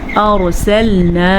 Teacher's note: را کو پر پڑھیں گے کیونکہ را ساکن ہے اور اس سے پہلے حرف کے اوپر زبر ہے۔